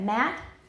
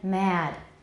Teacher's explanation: You can see the length of the vowel is much longer in mad.